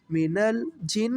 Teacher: جیم کو نون کے ساتھ ملایا، نون پر گنہ بھی ہوگا